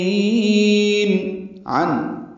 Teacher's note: عن یہ عن عین وسط حلق سے ادا کریں گے